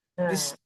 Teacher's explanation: విశ్వ దగ్గర ఉన్నదేమో తాళవ్య శకారం కాబట్టి కొంచెం మైల్డ్ గా విశ్వ అంటాము